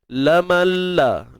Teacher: Tanpa dengung tuan-tuan. Kita masukkan nun ke dalam huruf lam bila gunnah, tanpa sebarang dengung. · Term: idgham bila gunnah